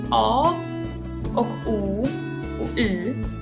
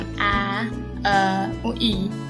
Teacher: Om du uttalar de här ljuden för dig själv och känner efter var i munnen du känner av att du uttalar de här ljuden, så känner du att a och o och u är ganska långt bak i munnen, medan ä, ö och y är längre fram.